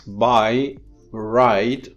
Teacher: the vowel is a diphthong which consists of two vowels compacted together in one, and then one of the vowels is the head, and in all of these instances the head comes first.